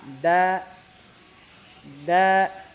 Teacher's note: berarti sifatnya istifal istifal itu tipis tipis